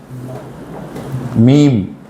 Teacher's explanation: രണ്ടു ചുണ്ടിന്റെയും ഉണങ്ങിയ ഭാഗമാണ് മീം